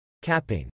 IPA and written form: ˈkæp ɪŋ (Capping)